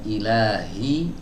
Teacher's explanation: yang betul huruf H itu keluar dari tenggorokan bagian bawah dari pita suara